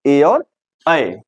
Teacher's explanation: कंठ के साथ तालू से उच्चारित होने वाले वर्ण है